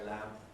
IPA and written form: læm (lamp)